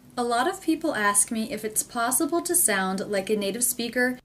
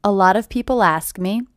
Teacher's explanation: the first thing I noticed is this T is a flap T